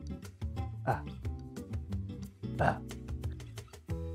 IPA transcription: ə